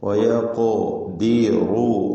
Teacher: ഖാഫിനും കൽക്കല സുഹറ, അതോടൊപ്പം തഫ്ഖീമും ഖാഫിനുണ്ടാകും.